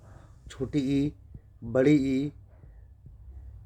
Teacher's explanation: जिनमें मुंह गोल नहीं होता है उसको अव्रतमुखी स्वर कहा जाता है